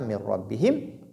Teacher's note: Il y a 2 ra. Alors, comme il y a 2 ra, il faut faire 2 frappes de la langue · Nun est dans ra, donc il n'y a plus de nun ici. Il y a 2 ra. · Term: fusion